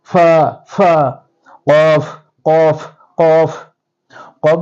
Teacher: এই কফটা ভিতর থেকে কন্ঠনালের ভিতর থেকে উচ্চারিত হবে কফ এবং দুই ঠোঁট কখনো মিক্স হবে না আমি প্রথমে বলেছি